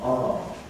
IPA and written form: ɑː (are)